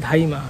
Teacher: এই যে দ এর জায়গায় ধ নিয়ে এসে পরিবর্তন করা এটাকে আমরা বলতেছি হচ্ছে ব্যঞ্জন বিকৃতি